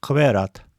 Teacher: К глухой, увулярный, взрывной согласны. Образуется задней частью языка в районе нёбного язычка, как к в казахском слове казак. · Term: глухой увулярный взрывной согласный